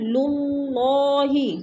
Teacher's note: للہ، اللہ پر پڑھا جائے گا اس لیے کہ اللہ سے پہلے لفظ لام کے اوپر پیش ہے تو اللہ کو پر کر کے پڑھیں گے۔